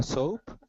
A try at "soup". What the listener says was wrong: SOUP instead of soap, which is SOAP, which is what I heard. Soup. Soup.